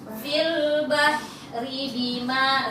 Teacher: Rinya pendek ya pindah cepat.